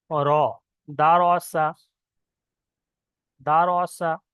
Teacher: র জবর র যখন বলছি তখন মুখটা একটু গোল হচ্ছে আর আওয়াজটা একটু মোটা মতন হচ্ছে। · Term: পুর